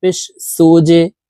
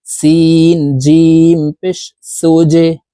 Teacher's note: এখানে জিম হরফ কলকলার হরফ তাই নিচের দিকে ধাবিত করে ধাক্কা দিয়ে উচ্চারণ করতে হবে